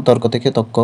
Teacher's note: শব্দের মধ্যে র লোপ পেয়ে যাবে বা রকার লোপ পাবে এবং পরবর্তী ব্যঞ্জন দ্বিত্ব হবে বা হয়